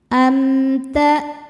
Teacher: menekan huruf hamzah maka suara kita tertahan atau kuat. Karena hamzah salah satu sifatnya adalah syiddah dari segi suara.